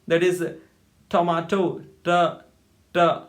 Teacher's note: here in English, the tip of the tongue touches the teeth ridge, that upper portion of upper teeth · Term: alveolar sounds